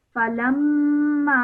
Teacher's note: Mim Mushaddad produces a nasal sound for 2 seconds.